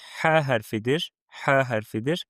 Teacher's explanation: Biz bu hərfləri boğazın ortasından tələffüz edirik. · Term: boğaz hərflər